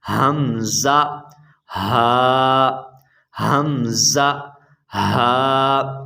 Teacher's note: حمزہ حلق کے نیچے والے حصے سے ادا ہوتا ہے